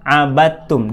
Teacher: Ciri idgham itu kalau kita menemukan dua huruf, yang pertama kosong dari harokat, yang kedua bertasydid. Nah, ini contoh huruf yang digabungkannya adalah huruf dal idgham ke huruf ta